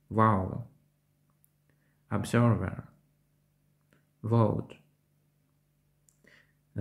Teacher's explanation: цей звук в кінці слів не оглушується він вимовляється енергійніше ніж українській в при вимові зуби верхньої щелепи повинні торкатися нижньої губи WoW observer